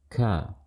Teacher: Makhrajnya di pangkal lidah bertemu dengan langit-langit atas di perbatasan yang lunak dengan yang keras. Jadi di langit-langit belakang, langit-langit mulut kita bagian belakang, itu ada yang paling belakang yang lunak. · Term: kaf